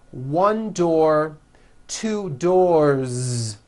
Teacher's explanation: 1 door, 2 doors, with a voiced Z ending